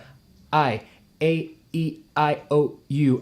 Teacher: all of that has that glottal stop it's called a glottal stop sometimes before you hear the sound